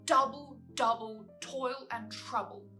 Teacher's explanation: the trochaic meter of alternate stress and unstress in double, double, toil and trouble, which creates this stilted and contrived feeling.